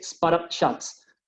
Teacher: Lo que acentúo es la primera partícula, spot.